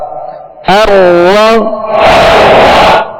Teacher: रा पर सबर है, रा को पुर पढ़ेंगे, रा पर पेश होगा, रा को पुर पढ़ेंगे।